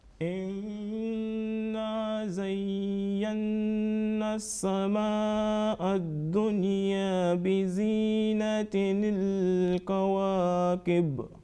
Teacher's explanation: ya with tashdid and noon with tashdid, and also nasal sound producing 2 seconds for the nasal sound and about 2 seconds about the alif madda.